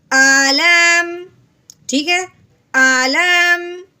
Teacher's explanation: لام کو میم کے ساتھ ملائیں گے کیونکہ میم ساکن ہے